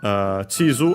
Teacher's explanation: Chizu, accent on the first syllable. Again, the second most common accent for Chinese compounds.